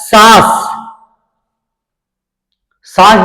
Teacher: नाक और मुख दोनों से बोल रहे हैं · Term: अनुनासिक